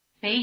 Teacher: the basic low tone of bay has become a rising tone